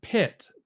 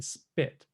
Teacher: in the P in pit, we have this puff of air that hopefully my pop filter is cutting out for you. But for spit, we don't have any. We consider these two sounds to be the same thing in the mind of the English speaker, but phonetically speaking, they're not the same thing.